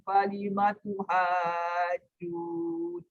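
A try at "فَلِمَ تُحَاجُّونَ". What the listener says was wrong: ambil balik falimatu ha tu. Pastikan ha tu panjang cukup. Falimatu hajjuna.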